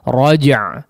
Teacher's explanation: Raja' di situ ada qalqalahnya, raja, ya, huruf jimnya ada qalqalahnya, maka perlu ditunaikan.